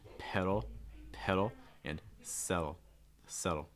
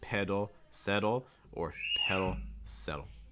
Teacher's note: make those D's even a little bit softer with the fast D sounds